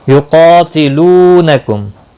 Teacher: قاف مستعلیہ ہے، پر پڑھا جائے گا